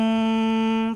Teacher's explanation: Pastikan dengungkan dengan dua harakat. Rapatkan bibir sebab jumpa dengan mim sabdu. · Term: Idgham mislain sagir